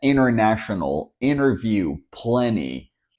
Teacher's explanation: The T is there in the word, but we don't pronounce it.